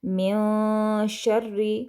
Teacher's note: नून पर मैंने इख्फा किया है